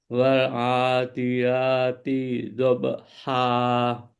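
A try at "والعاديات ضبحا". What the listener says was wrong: Jangan ditahan. Kalau ditahan nanti akan timbul harokah, timbul panjang, timbul mat. Maka bagaimana? Di situ tempo dicepatkan. Wal adiyati dhab. Langsung. Tidhabaha.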